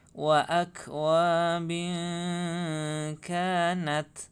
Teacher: Akwa bin kanat. Kasroh tanwin bertemu dengan kaf, bacaan ikhfa. Bacaan ikhfa harus samar-samar ya.